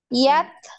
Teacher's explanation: nah sama huruf ta juga sama seperti kaf tadi ya. Tertahan dulu apa suaranya baru hamesnya ngalir.